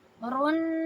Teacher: دو حرکہ آواز کو ناک میں رکھیں گے ، رن، یہ ہے نون تشدید، نون تشدید اور میم تشدید۔ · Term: غنہ